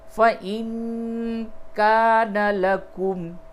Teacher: نون ساکن کے بعد کاف ہے، اخفا کریں گے